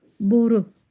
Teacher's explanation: Boru o u dodaqlanan saitli sözdür.